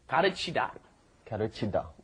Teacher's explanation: the L is right in between the R and L in English. It's more like a D almost.